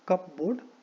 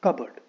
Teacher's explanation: So there is no प sound. It is कबर्ड.